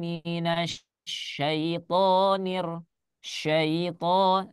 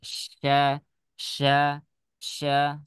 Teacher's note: huruf shin, ya, itu hanya menggunakan lidah saja makhrajnya. Tidak menggunakan syafatain. Walaupun jika memang nanti misalkan syafatainnya lidahnya bergerak sedikit itu tidak masalah.